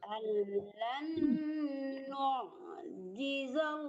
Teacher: Ya, allan nu' jangan nu' ya, kalau nu' tuh hamzah yang mati, nu' di tengah-tengah tenggorokan